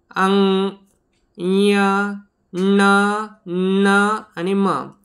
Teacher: अनुनासिक म्हणजे असे व्यंजन ज्यांचा उच्चार हा नाकातून होतो